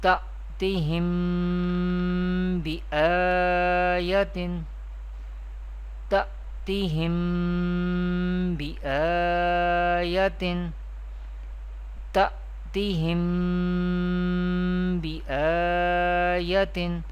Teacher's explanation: We pronounce Ikfai Shafawi in an Arabic accent with nasalization or with Gunna.